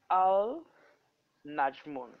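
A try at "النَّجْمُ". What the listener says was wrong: Point is this, that when we have a shadda after lam, lam becomes silent. So an Najmu. An Najmu, because you see a shadda on noon. Noon become double.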